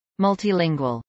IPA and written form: ˌmʌltiːˈlɪŋwəl (multilingual)